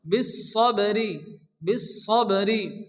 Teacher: বা সাকিন বা যেহেতু কলকলার অক্ষর হালকা ধাক্কা দিয়ে পড়তে হবে